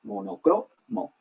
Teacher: Monocromo, el acento cae en la cro. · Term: sílaba tónica